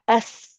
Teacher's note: And it's because the sound is going through a tight passage like when we whistle with our lips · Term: Safir